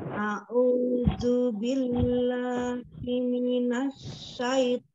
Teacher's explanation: A'udhu tidak merubah zalnya menjadi huruf dhad. Tetap zal ya.